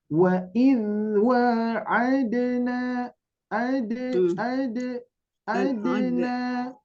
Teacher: dalnya kurang kurang tegas, Bu, karena huruf qalqalah itu tegas